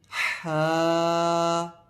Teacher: ہا کی آواز حلق کے درمیانی حصے سے ادا ہوتی ہے